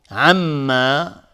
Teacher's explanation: میم تشدید دار دو حرکت غنه میدیم